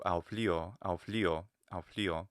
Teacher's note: But the pitch is high on the li. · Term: pitch accent